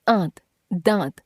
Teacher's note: यदि आप कहें आंत दांत तो अनुनासिक ध्वनि आ द के साथ सुनाई देती है